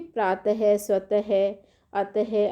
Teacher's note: और विसर्ग, विसर्ग का प्रयोग ह के रूप में किया जाता है, जैसे आप देखिए प्रातः, स्वतः, अतः आदि।